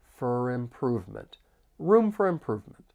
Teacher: instead of for, it's going to sound like fur. It's a much softer sound. And then I can link the final consonant sound with the vowel sound in improvement. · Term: reduced